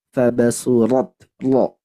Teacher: Harus tebal juga karena dia punya sifat isti'ala.